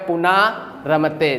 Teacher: र के पहले न में ह्रस्व आ है तो जो ह्रस्व आ है वो दीर्घ हो जाएगा बन जाएगा पुना रमते न क्या हो गया दीर्घ हो गया